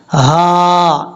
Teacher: یہ ہا بھاری ساؤنڈ کے ساتھ پڑھی جائے گی، اس کا جو تعلق ہے سینے کے ساتھ ہے